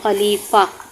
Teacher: یہاں عموماً زیادہ تر بچے یا اسٹوڈنٹس کنفیوز ہو جاتے ہیں کہ دو زبر آ رہے ہیں تو ہم نے ایک پڑھنا ہے۔ نہیں، گول تا میں ہم نے دو زبر ہوں بھی تو چھوڑ دینے ہوتے ہیں، ہا کی ہی آواز نکالنی ہوتی ہے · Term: ہا کی آواز